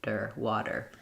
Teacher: for the flap, my tongue just lightly taps up in the front and then comes right back down with my voice on. Der, water.